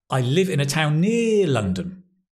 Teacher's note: You probably still stress the word town, but less, 'cause it's less important, near is the key information. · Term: sentence stress